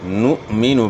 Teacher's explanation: حمزہ ساکن جب بھی آپ دیکھیں گے حمزہ ساکن ہے تو اس میں جھٹکے کی آواز ہوگی، ورنہ حرف چینج ہو جاتا ہے۔